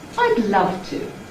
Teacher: The pitch is then noticeably above mid-level. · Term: High Prehead